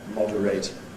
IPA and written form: ˈmɒdəreɪt (moderate)